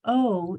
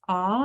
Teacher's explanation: on the first one o your mouth makes a more of a pucker shape o but on this a your jaw is dropped